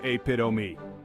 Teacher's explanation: notice how the stress is on the second syllable